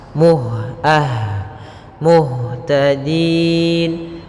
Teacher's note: sifat hamasnya ada mengalirnya nafas